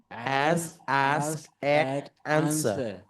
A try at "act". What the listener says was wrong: Okay, I heard a little oct, but act. All right, not bad, not bad.